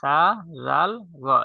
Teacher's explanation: জিহ্বার অগ্রভাগ সামনের উপরের দুই দাঁতের অগ্রভাগের সঙ্গে লাগাইয়া নরম করে